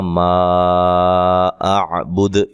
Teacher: اچھا، ویسے یہ الف مدہ ہے، یہ بات ذہن نشین رہے کہ یہ الف مدہ ہے، لیکن الف مدہ کے بعد حمزہ آ گیا ہے اسی دوسرے کلمے کے شروع میں، تو مد سبب پیدا ہو گیا بڑی مد کا، ٹھیک ہے، لہذا یہاں مد جائز ہوگی.